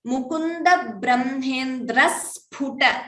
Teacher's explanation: And Sphu, the pa should be Mahaprana.